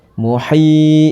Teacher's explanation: ada hukum bacaan mad tabi'i karena ada kasroh bertemu dengan ya mati ya. Dibaca panjangnya 2 harokat.